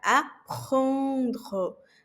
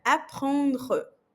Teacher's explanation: Je vais apprendre, porque o EN tem som de an. E esse R em francês é o R aqui da garganta. Apprendre. Chi aqui na garganta.